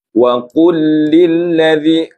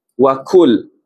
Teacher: Kita kena tebalkan huruf qaf ni. Ya. Jadi qaf dengan kaf bezanya tebal dengan nipis.